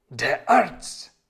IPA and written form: deːɐ̯ ˈaʁts̩ (der Arzt)